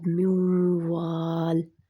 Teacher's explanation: नून को मैंने नहीं पढ़ा, अब मीम जो था वो वाव में दाखिल हो गया, ठीक है? एक लफ्ज़ का दूसरे लफ्ज़ में दाखिल होना पूरा हो रहा है, कंडीशन पूरी हो रही है, नून नून साकिन है, नून के ऊपर जज़म है और आगे जो है वाव। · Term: इदगाम